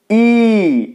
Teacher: ঠোঁটটা দেখুন কেমন হচ্ছে, ঠোঁটের আকৃতি ই। ঠোঁটটা স্বাভাবিকভাবে যেমন থাকে এর থেকে ই যখন বলছি অনেকটা ছড়িয়ে যাচ্ছে বা প্রসারিত হচ্ছে · ঠোঁটটা স্বাভাবিকভাবে যেমন থাকে তার থেকে এ বলার সময় অনেকটা ছড়িয়ে যাচ্ছে, ঠোঁটটা প্রসারিত হচ্ছে। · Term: প্রসারিত স্বরধ্বনি